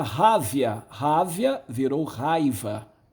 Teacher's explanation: O A estava numa sílaba, o I estava na outra. O I simplesmente ele inverteu e ele se aproximou do A. Houve aqui uma metátese, nós não tivemos perda de fonemas, apenas um deslocamento, uma transposição, né?